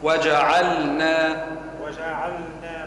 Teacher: أنا سمعت النون واللام ما سمعتهاش، هي وجعلنا، يلزمني نسمع الاثنين اللام والنون